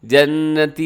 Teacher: نون آپ نے مشدد کی وجہ سے غنہ کیجیے گا